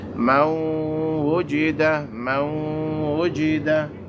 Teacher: Now all we have to do is introduce a humming nasal sound at that connection point of the noon and the wow. So we say Mawujida, Mawujida.